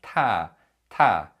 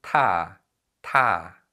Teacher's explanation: if you produce an aspirated sound like tar tar you should feel an extra puff of air coming out of your mouth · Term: aspirated consonant sound